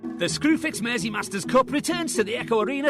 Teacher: you'll often hear a flatter more nasal sound and there's a distinctive Rhythm to the way words are spoken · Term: scous accent